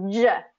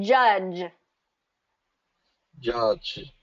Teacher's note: what we got to make sure is that your voice is turning on